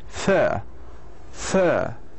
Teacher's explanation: In the British we say fur, fur, without pronouncing the R.